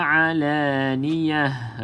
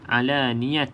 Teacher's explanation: Okey, dekat ta ni kalau berhenti bunyi dia macam ha, bukan alaniyat. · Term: ta bulat